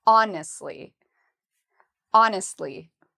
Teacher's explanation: we pronounce honestly by putting the stress on the first syllable